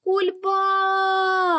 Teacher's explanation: який звук ми протягуємо найдовше перший звук а він знаходиться в другому складі тобто у нас другий склад наголошений